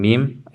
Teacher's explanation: In articulating the ba and the mim, the lips meet completely. So, waw, it's not a complete meeting. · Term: meeting completely